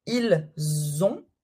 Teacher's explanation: Ils ont comme un Z, c'est la liaison.